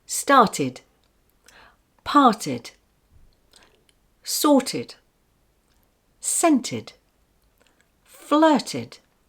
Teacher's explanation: The past tense ed, ending of words, with a final T sound like this with an id sound